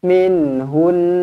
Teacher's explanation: Dengungkan dua harakat wajibul gunnah.